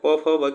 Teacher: यह ओष्ठ से उच्चारण होने वाले होते हैं, ओष्ठ की सहायता से